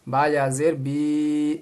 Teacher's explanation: اب یہاں با کے آگے دیکھیے یا لگا ہوا ہے، یا کے اوپر ہے جزم، یا ساکن سے پہلے زیر آئے تو اس کو کھینچ کے پڑھیں گے، یا مدہ ہو گیا